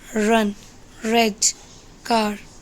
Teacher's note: Next one is r sound. The sound r represent the voiced post-alveolar approximant sound. The r sound is an approximant.